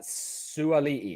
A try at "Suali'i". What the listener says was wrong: Extra A. Suali'i.